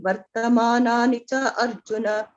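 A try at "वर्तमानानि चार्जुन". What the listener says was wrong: Why are you saying cha Arjuna? Cha Arjuna. But you should not break.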